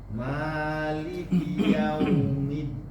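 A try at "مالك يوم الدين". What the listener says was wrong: Lebih nunnya tawasud sedikit. Maliki yaumiddin. Din.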